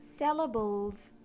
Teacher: when the E comes after the L letter we pronounce the L as *a dark L* not *a light L*.